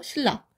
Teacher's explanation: 바로 비음인 니은이 리을로 바뀌는 건데요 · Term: 유음화